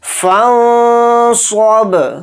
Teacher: گے اور صاد کو یہاں پر موٹا یعنی پر پڑھیں گے، با کے اوپر جزم ہے تو با کے اندر قلقلہ بھی کریں گے · آ رہا ہے، صاد حروف اخفا میں سے ایک حرف ہے، نون کی آواز کو ناک میں چھپا کر اخفا کے ساتھ پڑھیں گے اور صاد کو با ساکن کے ساتھ ملا کر پڑھیں گے